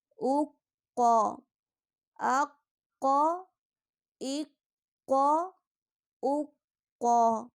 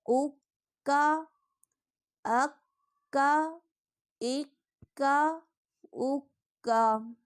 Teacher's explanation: نقطوں والا قاف پر یعنی موٹا پڑھا جائے گا، جبکہ دوسرا کاف باریک پڑھا جائے گا